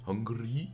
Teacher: I don't know why I trilled my R there